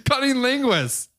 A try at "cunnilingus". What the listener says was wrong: It's cunnilingus. But it sounded to me like you're saying cutting linguist.